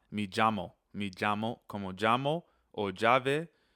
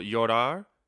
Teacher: very important to remember the double L sound is a J sound